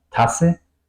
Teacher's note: Doble S, la vocal corta y la S larga